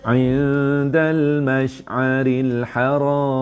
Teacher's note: Ni dengung sengit, sembunyikan bunyi nun, dah nak ready sebut dal.